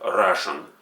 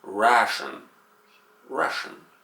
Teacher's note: an a sound becomes elongated for many Russian speakers and sound like Russian. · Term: schwa sound